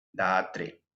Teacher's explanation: Cuando a la ri vocal le sigue otra vocal cualquiera, se convierte en la semivocal ra.